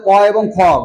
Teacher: অঘোষ মানে হচ্ছে ক এবং খ, গলাটা কম কাঁপে, গলাটা কি হয়, কম কাঁপে, এই জন্য ক এবং খ এই দুইটাকে বলা হয় অঘোষ বর্ণ।